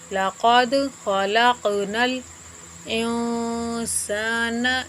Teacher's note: لقد خلقنا الانسان نون ساکن کا یہاں پر اخفا ہوگا، اخفا ایک الف کے برابر رک کر پڑھیں گے، ناک میں آواز جاتی ہے، اسی کو اخفا کہتے ہیں